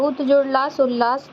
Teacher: त के बाद यदि ल हो तो त ल में बदल जाता है